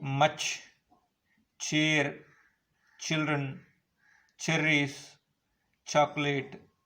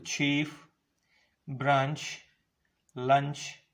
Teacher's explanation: When these sounds are produced, the air released audibly with an exploding noise during the first part and with noisy friction during the second part. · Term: affricates